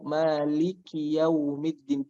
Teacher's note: Hams pada kaf ini nggak boleh berlebihan.